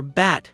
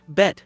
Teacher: The a sound in bat is more open, more expansive. The mouth is more rounded, as if you were going to take a bite of an apple. The a sound in bet is more closed, more discreet